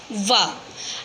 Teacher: दंत्योष्ठ्य वर्ण का सूत्र है वकारस्य दंतोष्ठम, यानी कि जो व वर्ण है वो दंतोष्ठम है। इस व वर्ण को बोलते समय दांत और होठ दोनों का प्रयोग होता है। तो जिस वर्ण के उच्चारण में दंत के साथ साथ ओष्ठ का प्रयोग होता है उसे दंत्योष्ठ्य वर्ण कहते हैं।